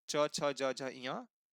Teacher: तो इन सभी वर्णों का उच्चारण स्थान तालु कहलाता है